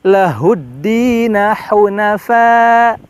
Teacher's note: Setelah kita tadi memposisikan ha besar, ha di tenggorokan yang paling dalam, setelahnya ada hunafa, di mana di situ ha tipis yang secara makhraj di tenggorokan paling atas